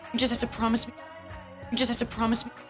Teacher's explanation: Not a lot of melody, pretty flat, mostly an unstressed feeling.